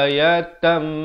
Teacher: Asalnya ayatan, jadi kena baca ayatam. Tanwin bertemu mim, masuk beserta dengung 2 harakat. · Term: idgham bi gunnah